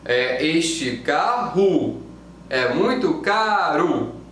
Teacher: Il y a une tendance à la fin des mots, le O devient OU, et le E, il va devenir I.